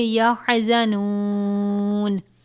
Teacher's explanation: یہ نون واو پیش نو ہے، واو مدہ ہے، کہ تھوڑا سا کھینچ کے پڑھیں گے